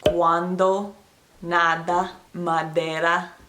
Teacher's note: They stick their tongue kind of out when they say the D. At least that's what I figured out to match the sound that they make.